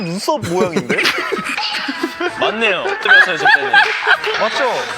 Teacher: Here is making a joke, and his voice gets more excited. So his intonation in the middle of his sentence now has a bit of a wave, but it's not that much compared to others, and his signature smooth tone is still there.